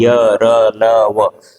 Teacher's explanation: कहीं भी आपका जिह्वा, दंत, ओष्ठ आपस में टच नहीं होंगे, छुएंगे नहीं, स्पर्श नहीं करेंगे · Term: अंतस्थ व्यंजन